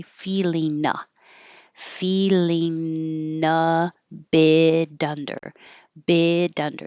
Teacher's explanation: This T changes to a D and you'll hear it connect to the under.